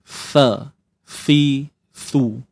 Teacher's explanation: makhrajnya hujung lidah kita perlu keluarkan sedikit sahaja dan diapit gigi atas dan bawah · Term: huruf tha